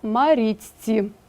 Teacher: шиплячі перед свистячими стають свистячими